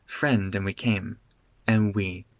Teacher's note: But the D in and does disappear.